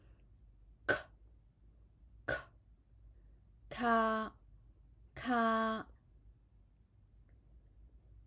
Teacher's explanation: raise the back of your tongue and block the air Then release the air with heavier puff of air